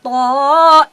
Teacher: তো আমরা শুরু শুরু বলি, পুরোটাই মাথা, যার কোনো নাই নুক্তা, জিহ্বার অগ্রভাগ তার বরাবর উপরের, সামনের দুই দাঁতের গোড়ার সাথে, সামনের দুই দাঁতের গোড়ার তালুর সাথে থপ করে লেপটে গিয়ে মোটা মোটা আওয়াজে যার উচ্চারণ করতে হয়